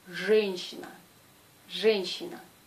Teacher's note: la lettre J est toujours dure, on ne peut pas le prononcer de la façon molle